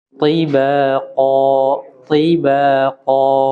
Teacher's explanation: jadi huruf to walaupun kasrah tebal